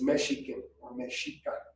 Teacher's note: The word that Mexicans used for ourselves was Mexica. The X is pronounced with a sh sound.